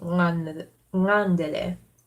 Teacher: Gotta get the velar N going.